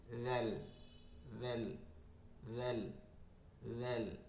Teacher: জিব্বার আগা সামনের উপরের দুই দাঁতের আগার সঙ্গে লাগায়